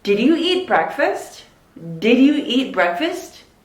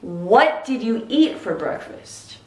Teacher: more information questions actually go down